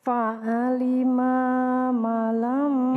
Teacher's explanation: Ma yang pertama pendek, ma yang kedua panjang.